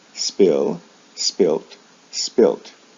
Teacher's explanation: a final t is added or the final sound is changed from a d to a t the original vowel sound doesn't change for example spill spilt spilt